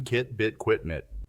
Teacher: First, the front vowels. In each sound that tongue is held in the front of the mouth.